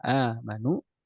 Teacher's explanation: hamzah yang keduanya dihilangkan, dimasukkan ke dalam hamzah yang pertama, kemudian dipanjangkan hingga terjadilah perubahan menjadi mad badal.